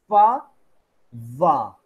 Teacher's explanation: Basically, air stream tries to come out, but the friction between your upper teeth and lower lip does not let the air stream come out smoothly. Air passes through the friction. · So there is a friction between your lower lip and upper teeth, right? Basically, air stream tries to come out. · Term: labiodental sounds